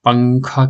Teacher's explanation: نون کی آواز کو ناک میں چھپا کر پڑھنا چاہیے. نوک زبان تالو سے ہٹا کر جیسے اردو میں پنکھا کے نون کو پڑھتے ہیں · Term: اخفا